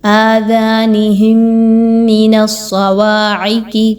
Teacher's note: صاد آ گیا دوبارہ سے موٹا حرف ہے، سیٹی کے ساتھ موٹا کر کے پڑھا جائے گا